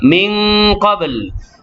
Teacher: Min qabl, nun mati bertemu dengan qaf, ifa hakiki dengan 2 harakat. Qablu ba yang sukun ni qalqalah sughra. Jadi kalau kita berhenti sini dia susah sikit kita nak lafazkan pasal pertama ba yang mati qalqalah dah, kemudian lam ni mati ujung.